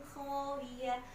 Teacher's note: Kha-nya jangan lupa, banyak yang kha-nya bacanya cuma ho. Kha itu harus ada getaran di tenggorokan.